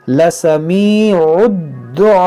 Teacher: جب ہم وقف کریں گے تو حمزہ ساکنہ ہوگا تو اس میں جھٹکا ہوگا